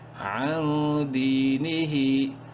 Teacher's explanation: عن دی، نون زیر نی، ہا کھڑی زیر ہی، یا مدہ ہے، دال کو ایک الف برابر لمبا کریں گے اور ہا کو ایک الف برابر لمبا کریں گے کھڑی زیر کی وجہ سے